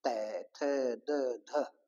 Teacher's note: तो अपनी जीव है वो दांत से टकराती है इसी प्रकार त वर्ग वाली लाइन बोल के देख लो दांतों से टकराती है